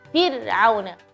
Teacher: ra di situ dia ra mati. Jadi nggak boleh sedikit pun kita kasih qalqalah